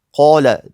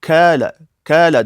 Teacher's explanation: Ya'ni k ga moyil qilib o'qiydi. og'izni to'ldirmasdan, yo'g'onlik sifatini bermasdan, tilimiz orqa tarafini ko'tarmasdan kga moyil qilib o'qiydi.